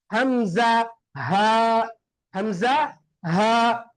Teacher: தொண்டையுடைய ஆரம்பம், தொண்டையுடைய நடுவு, தொண்டையுடைய இறுதி என்ற மூன்று வகையாக இந்த தொண்டையை பிரிப்பாங்க. அதுல அதுனல் ஹல்க், தொண்டையுடைய ஆரம்பத்தில் இருந்து வெளியாகக்கூடிய எழுத்து